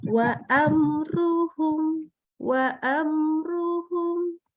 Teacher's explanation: Ya, mimnya jelas, nggak boleh ditekan, nggak boleh didengungkan. Ini nama hukumnya adalah idhar syafawi.